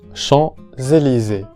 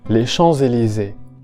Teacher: Champs-Élysées. La S se pronuncia Z, la S sonora.